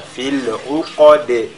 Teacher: في العقد, la lettre qaf avec la tafkhim, c'est pas fil uqad, mais uqa, fil uqad, et la lettre dal de la fin qui est lue avec al-qalqala, fil uqad. Wa min sharri naffathati fil uqad.